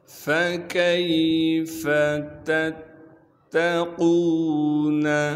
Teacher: ہے، تشدید ہونے کی وجہ سے تھوڑا سا ٹھہراؤ رکھیں گے، قاف کو موٹا کر کے پڑھیں گے اور قاف کو آگے واو مدہ سے ملا دیں گے